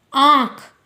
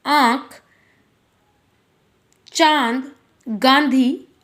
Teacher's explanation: इसका उच्चारण नाक और गले दोनों की सहायता से होता है। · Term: अनुनासिक